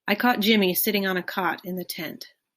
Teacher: that's the so-called caught cot merger where the neighboring a and a sounds have merged in certain dialects